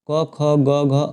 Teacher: कंठ में आता है कंठ क ख ग घ अंग अ आ और ह, ये सभी कंठ से बोले जाते हैं